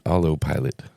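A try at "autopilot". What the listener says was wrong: I don't even think you said pilot. You said pilo.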